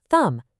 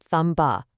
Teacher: Your mouth doesn't actually make that buh sound at the end. It's thumb, not thumb-buh.